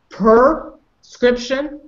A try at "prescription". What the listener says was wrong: Oh, I heard per. I don't want per. Try again.